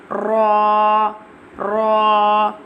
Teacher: Ra pronounced from the edge and the top part of the tongue touching the gums of the top four front teeth